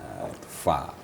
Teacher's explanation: Kalau fa, fa itu di tengah-tengah bibir, di antara gigi atas.